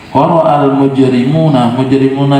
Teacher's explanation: dibaca panjang karena mad tabi'i waw sukun sebelumnya dhammah